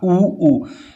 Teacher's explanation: ऊ ऊ पता चल रहा है कि होठों से, अगर होठ नहीं होंगे तो ऊ ऊ नहीं बोल सकते हम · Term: ओष्ठ